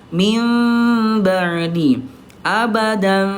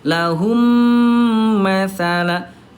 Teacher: bibirnya tidak betul-betul dirapatkan banget seperti halnya mim bertemu dengan mim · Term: iqlab